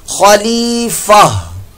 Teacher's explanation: खलीफतन, खलीफतन वक्फ की सूरत में यहां पर ये गोल ता है और गोल ता को वक्फ की सूरत में हा साकिन से तब्दील कर दिया जाता है।